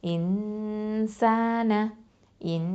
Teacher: அடுத்தது ஹம்சா கெஸ்ரா நூன் சுக்கூன் இன், ஹம்சா கெஸ்ரா நூன் சுக்கூன் இன். இப்போ நூன் சாக்கினாக்கு அடுத்த எழுத்து என்னன்னு பார்க்கணும், சீன் வந்திருக்குது. அப்போ இங்கே என்ன சட்டம், எஹ்ஃபா பண்ணணும், மறைச்சு ஒன்றா செஞ்சு ஓதணும். அப்போது இன்சான இன் அப்படின்னு மறைக்கணும்.